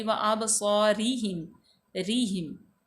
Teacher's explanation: तो बाद वो जो है हरूफ शफ़िया है, हमज़ा ज़बर बा, अब बा जो है वो हरूफ कलकला में से है, यहाँ पे हिला के पढ़ेंगे। स्वाद जो है हरूफ मुस्तालिया में से है, पुर पड़ी जाएगी। रा जो है वो मकसूर है, तो रा बरीक पड़ी जाएगी।